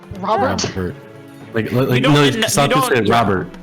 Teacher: you don't say the t at the end of robert it's just kind of a glottal stop